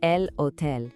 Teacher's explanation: In Spanish, it's spelled the exact same way, but remember, the H is completely silent